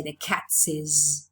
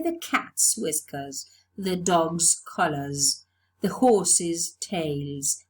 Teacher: plural in spelling we add the apostrophe and we pronounce cats we don't add an extra syllable we don't say the cats is we say the cat's whiskers